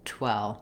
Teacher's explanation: The W of 12 has rounded lips, and the V at the end is my lower lip and upper teeth coming together, and the sound continuing, flowing through with a buzzing vibration.